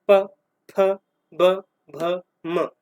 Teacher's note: या फिर आप ऐसा करिए, मुंह खोल के रखिए और बोल के देखिए, प। बिना लिप्स मिले हुए पा वर्ग के कोई भी वर्ण को या व्यंजन को आप बोल ही नहीं सकते · बोलेंगे तो आपके लिप्स बंद होके खुलेंगे, आपके लिप्स पे प्रेशर आएगा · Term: ओष्ठ